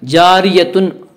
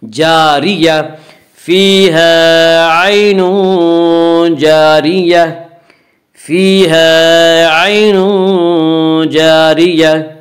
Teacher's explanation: جب ہم وقف کریں گے تو گول تا ہائے ساکنہ سے بدل جاتی ہے